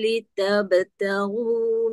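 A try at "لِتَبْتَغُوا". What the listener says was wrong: Qalqalah saja terlekat litabtaghu. Lagi sebagi dia mengalir tanpa putus.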